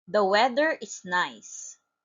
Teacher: It is a falling intonation because it is a statement and a sentence that has complete thought.